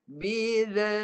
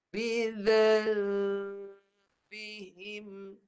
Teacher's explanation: Sepatutnya nipis. Dengungnya nipis sebab dia bertemu ba. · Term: dengung nipis